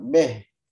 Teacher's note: Beh itu kayak nyampur kasroh dengan fathah. Itu dihindari.